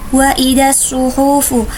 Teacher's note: alif lam bertemu dengan salah satu huruf asyamsiyah yaitu shad maka dinamakan juga alif lam syamsiyah, dan biasanya alif lamnya tidak dibaca. Sedangkan nusirat, ra-nya yaitu ra tafhim karena berharokat fathah dan biasanya dipertebal.